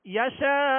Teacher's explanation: حمزہ ساکن کر دیں گے، آخر میں جھٹکا ہونا چاہیے اور حمزہ کی آواز پر ہم رکیں گے